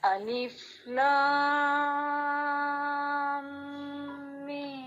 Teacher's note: لام پڑھنے کے بعد فوراً میم پہ نہیں آنا، بلکہ لام کی میم کو اگلی میم سے ملانے کے لیے آپ نے تھوڑا سا ناک میں آواز کو ٹھہرا لینا ہے